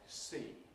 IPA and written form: siː (see)